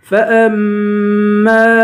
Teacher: میم پہ غنہ کریں گے